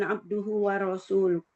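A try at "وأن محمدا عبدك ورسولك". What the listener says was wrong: Abduka ya, bukan abduhu ya. Abduka wa rasuluk. Abduka wa rasuluk.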